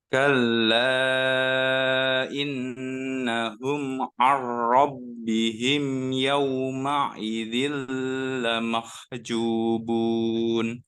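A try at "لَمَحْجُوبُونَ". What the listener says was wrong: Nah, di sini jangan disentak. Nah, di sini juga sama. Cukup ditunaikan tasdidnya aja.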